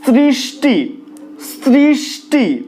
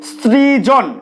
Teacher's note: দন্ত স এর সাথে যদি রিকার যুক্ত থাকে সেক্ষেত্রে দন্ত স এর মতোই উচ্চারিত হয়, অর্থাৎ স উচ্চারণের সময় দাঁতকে জিভ স্পর্শ করে।